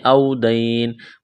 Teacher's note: واو لین ہے یا لین ہے بغیر کھینچ کے پڑھنا ہے